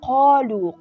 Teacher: قاف تفخیم ادا کیږي یعنی ډکه.